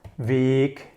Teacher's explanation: Weg with a long E means way, so weg means way.